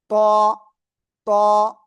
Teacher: জিব্বার আগা, এই দুই দাঁতের গোড়ায় লাগান, লাগান লাগান লাগান, লাগিয়ে মোটা আওয়াজে পড়তে হবে এই অক্ষরটা